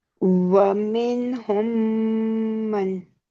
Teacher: मीम के बाद एक और मीम मुतहरिक आ गया, तो इसका मतलब है इसके अंदर टू काउंट्स का गुन्ना हम करेंगे